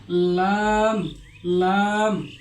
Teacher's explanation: জিহ্বার আগের কিনারা সামনের উপরে দাঁতের গোড়ার সঙ্গে লাগিয়ে লাম উচ্চারণ করতে হয়। আমাদের যে জিহ্বা রয়েছে জিহ্বার সামনের ডান অথবা বাম কিনারা আর এই কিনারা বরাবর যে উপরে দাঁত রয়েছে ওই দাঁতের গোড়া থেকে লাম উচ্চারিত হয়, যেমন লাম, লাম।